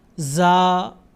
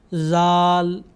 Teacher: زا کی آواز سخت ہے اور زال کی آواز نرم ہے